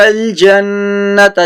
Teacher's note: جنہ پہ غنہ کرنا ہے، نون مشدد ہے یہاں